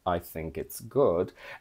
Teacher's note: this intonation pattern I think it's good is called fall rise I think it's good and it conveys uncertainty doubt and more